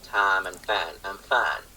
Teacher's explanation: The very technical and boring term is that the diphthong loses its off glide. · So we don't go from ah to ih, instead it all becomes an ah sound. · the diphthong loses its off glide. So we don't go from ah to I.